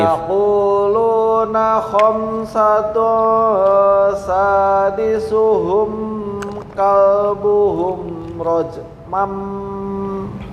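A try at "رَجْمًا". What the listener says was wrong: Kayak masih ragu-ragu nih. Sadisuhum ini masih apa istilahnya dengung. Rajmam ini kurang tengah lidah. Bukan tapi memantulnya langsung rajmam kalbuhum rajmam bil ghaib.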